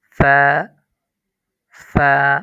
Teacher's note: ফা এর মধ্যে ১ আলিফ টান। ৩ আলিফ টান হবে না।